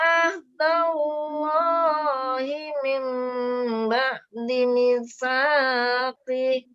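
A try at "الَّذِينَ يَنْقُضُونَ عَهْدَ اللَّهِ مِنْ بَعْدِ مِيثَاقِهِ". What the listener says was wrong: Tadi yang kudunat dengunya kurang, biar sama dengan mimba di sama-sama 2 harokat.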